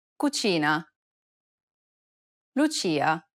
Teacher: lesson six number five mispronouncing the c and i sounds together this sound is identical to the ch in church the only difference though is that it's stressed even more in italian than it is in english